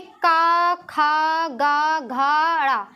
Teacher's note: कंठ से आवाज़ निकल रही है, ठीक है। तो ये क्या हो जाता है, कंठ हो जाते हैं।